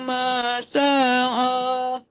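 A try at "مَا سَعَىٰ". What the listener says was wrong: Bukan, tadi masaan kepanjangan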